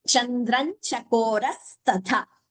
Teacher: Chandram Anuswara followed by Cha. Chandran Chakoras Tatha. This becomes a Sandhi.